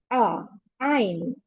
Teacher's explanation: Ein sound comes from the middle of the throat.